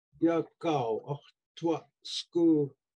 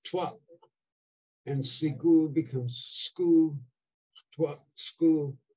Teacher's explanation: So the U, short U drops in tua, and the short I drops in sigu. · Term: dropping of short vowels